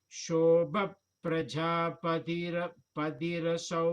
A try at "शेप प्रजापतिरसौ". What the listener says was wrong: Last line Shepa, not show. She.